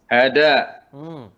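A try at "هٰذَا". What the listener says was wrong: Haza, jangan hada. Haza.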